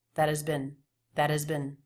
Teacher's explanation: an H like sound but he's not really reducing vowels ah that and has sounds more like an a vowel than a schwa